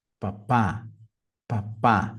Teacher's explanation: a segunda sílaba é a mais forte